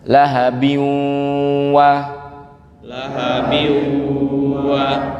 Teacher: Selanjutnya ada tanwin ketemu wawu, idgham bil gunnah. Ditahan agak lama Bapak Ibu.